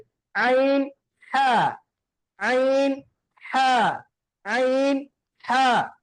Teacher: இரண்டாவது வசத்துல் ஹல்க், தொண்டையுடைய நடுப்பகுதியில இருந்து வெளியாகக்கூடிய எழுத்து